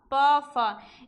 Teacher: प और फ ये हमारे प वर्ग के हैं, इनका उच्चारण स्थान होता है ओष्ठ